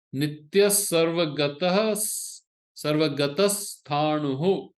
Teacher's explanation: when the visarga is followed by a sa, it becomes a sa